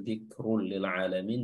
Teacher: Huruf ra di sini dia tafkhim atau dibaca tebal, dzikrul lil alamin, dan ada dhammatain atau tanwin bertemu dengan huruf lam ya.